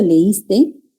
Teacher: Si digo leíste, mi inflexión tonal baja y yo estoy afirmando. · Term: Inflexión descendente